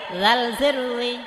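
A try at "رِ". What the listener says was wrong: রি রি লই না, লই বললে মোটা হয়ে যাবে। রি রি রাল জের রি, রাল ইয়া জের রি,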